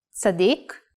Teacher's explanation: pronounced while putting the emphasis in the last syllable